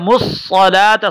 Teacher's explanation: صاد کو ہم موٹا پڑھیں گے لام کو موٹا نہیں کریں گے